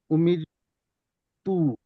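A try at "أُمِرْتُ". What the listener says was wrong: কোন টান হবে না এখানে উমিরতু এমনভাবে বলছেন টান হবে না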